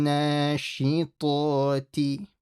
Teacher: make sure you don't stretch that T. Make sure it's quick. Nashitoti. So the na is stretched and the ta is stretched.